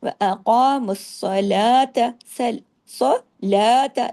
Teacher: ता सिर्फ एक हरकत त और बारीक भी व सलात सलात लाम को तो हमने दो हरकात खींचा लेकिन ता को नहीं खींचना